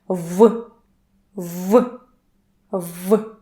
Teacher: Russian V is very clear, very voiced, and very strong.